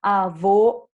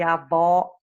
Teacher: avô fechado era masculino e avó aberta era feminina